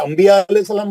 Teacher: نون ساکن کے بعد با ہے, میم سے پڑھتے ہیں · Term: اخلاب